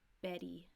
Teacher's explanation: if a T or a double T is between two vowels it will have a soft D sound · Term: flap T